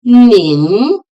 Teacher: Nin is pronounced with the second rising tone. Nin. Hao is in third tone.